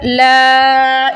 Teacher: اس کو ہم 3 سے 5 سیکنڈ کے لیے لمبا کریں گے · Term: مد